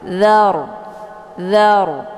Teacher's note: zar dengan posisi pangkal lidah juga ikut terangkat karena ra ini tebal. Karena ro sukun bila huruf sebelumnya itu berharakat fathah ataupun atas, maka ra ini harus dibaca tebal.